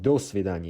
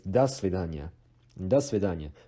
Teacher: Because do is actually a preposition. So when you pronounce a preposition and the word by itself as a phrase, the O still de-stresses as A